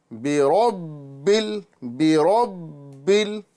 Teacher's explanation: बा हरूफ कलकला में से है और मुशद्द है लिहाजा इसको जमाऊ के साथ अदा करेंगे